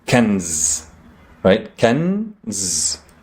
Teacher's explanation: that's the consonant sound, n, and then there's no vowel sound, so I just jump to the zain. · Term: sukoon